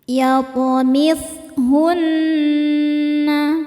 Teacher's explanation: Kemudian huruf nun hukumnya gunnah musyaddadah karena ada nun yang bertasydid. Cara membacanya berdengung, tahan dengungannya kurang lebih 2 harokat.